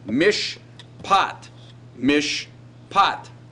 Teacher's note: this is a good example of the so-called silent schwa which is literally taking up empty dead space